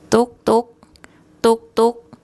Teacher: the to tau initial consonant. This is the sound sort of in between a D and a T. The short U vowel, and then the Gorgai final consonant, which makes an unreleased K sound. · And the tone rule, it's a mid-class initial consonant and the third tone mark, and it's a high tone.